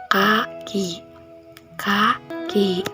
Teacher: Cara pembentukannya pangkal lidah menempel langit-langit lunak lalu dilepaskan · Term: huruf K